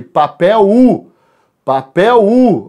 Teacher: Então esse L vai fazer o som de U ali